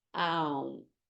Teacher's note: In Sanskrit, the sound O is a diphthong, a subtle sound that begins with one vowel and changes to another vowel within the same syllable. Thus, O sound begins with ah, as in law, and ends with the U sound as in put. Oh, it is why it is often written as A-U-M.